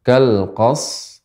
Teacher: Kurang. Jadi pengucapannya pertama shadnya kita berikan sifat shad yaitu tajam dan juga hamesnya.